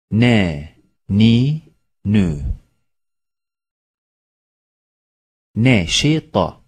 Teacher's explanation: dilin ucuyla üst ön dişlerin etlerinden çıkarılır. İnce okunur. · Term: Nun